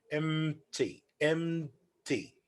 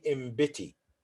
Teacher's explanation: just that the ma is nasal and the explosive okay so you move from ma to pa okay but without inserting a vowel because they have the same place of articulation